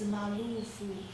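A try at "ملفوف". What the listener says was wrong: Malu. No, mal. The lamb has sukun. The lamb has sukun. Yes, malfuf. Okay, the lamb has sukun. This lamb in your handout has dhamma. Make it sukun, this. Malfuf.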